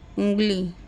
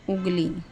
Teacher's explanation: निरनुनासिक स्वर में जो आवाज़ है वो केवल मुंह से आती है, नाक से नहीं।